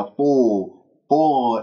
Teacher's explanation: الطاء مفخمة مرتبة ثالثة